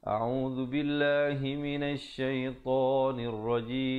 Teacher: dzu di hujung lidah